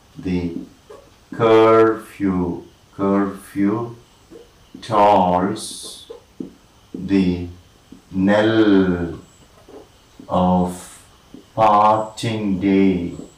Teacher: a line of poetry in the unstressed stressed pattern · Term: iambic meter